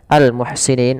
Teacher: alif lam qamari ya dibaca jelas Suara lamnya